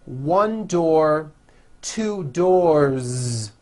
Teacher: 1 door, 2 doors, with a voiced Z ending.